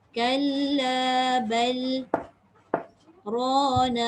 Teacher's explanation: Dia berjiran. Lam dekat hujung lidah, dekat lelangit. Ra pun sama hujung lidah dengan lelangit. Kalau ikutkan kita boleh baca masuk terus pada ra.